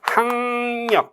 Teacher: 기역과 리을이 만나면 이응 니은 되거든요. 비음으로 동화된 거죠. 비음화예요. 그 비음화라는 부분에서는 동일하지만은 나머지 부분들이 같이 있지는 않죠.